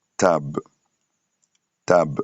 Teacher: tab avec les A ouverts